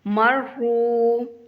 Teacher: را کے اوپر شاد ہے تو را کو ہم تھوڑا سا سختی سے ادا کریں گے، مرحو، اور را کو ایک واو کے برابر لمبا کریں گے، اس کے آگے واو ہے، مرحو۔